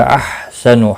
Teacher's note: ایکم، یہاں پر بھی میم ساکن کے بعد حمزہ آیا ہے، اظہار شفوی ہوگا۔ احسن، ہا وسط حلق والا ہے، اس کی ادائیگی کا خاص خیال رکھیں گے